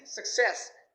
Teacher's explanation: All of my students say success, but it is success. The second syllable is ses, so it should be stressed.